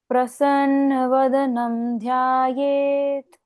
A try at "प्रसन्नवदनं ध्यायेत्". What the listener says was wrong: Perfect.